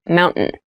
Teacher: when you pronounce this word in fast speech it sounds like mountain the t sound is reduced